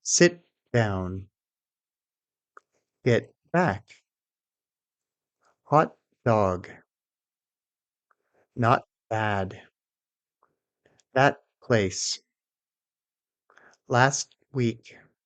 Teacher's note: Focus on stopping the t and not releasing it.